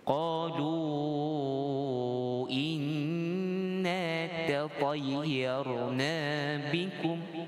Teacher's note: seperti kebiasaannya nun syaddah ataupun nun tasydid, sabdu itu wajibul gunnah, dengung.